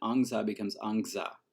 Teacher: they still have the epenthetic stop, and angsa becomes angza with a g